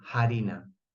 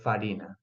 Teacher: the speakers of these languages pronounce these Latin words by replacing the F with an aspirated sound, no? Harina, instead of farina.